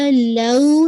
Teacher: لو یہ آپ کا واولین ہے اس کو بھی 2 کاؤنٹ